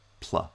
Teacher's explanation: it sounds like we're pronouncing the p first and the l second in fact we're pronouncing them together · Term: onset cluster